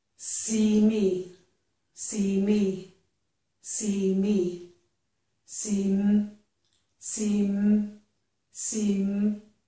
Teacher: If I just say see-m the beginning of me, my lips are still closed.